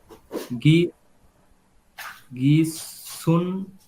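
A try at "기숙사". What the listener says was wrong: না, গিয়ক যদি, গিয়ক যদি শব্দের প্রথমে বসে তাহলে এর উচ্চারণ খয়ের মতো হবে, খ। আমাদের সুয়ের নিচে তো আছে গিয়ক, নিয়ন না। দেখেন দুইটা কিন্তু একই রকম দেখতে, গিয়ক আছে।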